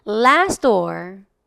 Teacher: last door이라고 하기보다는 last door과 같이 앞에 있는 T가 살짝 죽어 들어가면 되겠습니다.